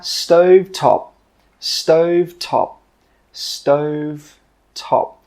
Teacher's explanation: with that final P sound, we stop the air from coming out